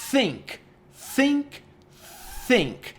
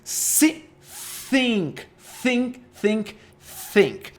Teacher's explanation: Imagina que é o som do S, think com a língua presa. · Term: TH voiceless